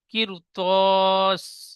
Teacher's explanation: র সাকিনের পরে হরফে মুস্তালিয়ার 7টি অক্ষরের মধ্যে ত এসেছে, তাই রকে পুর করে পড়তে হবে